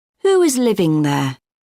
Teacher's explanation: we use w to link the words